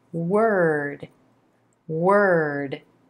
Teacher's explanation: we start first with that W consonant rounding the lips out the tongue already in place for the sound as we move